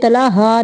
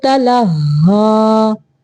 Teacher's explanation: عنہ تلہی، یہاں پہ تلہا نہیں پڑھنا، لام کو ہا کے ساتھ ملانا ہے، ہا مشدد ہے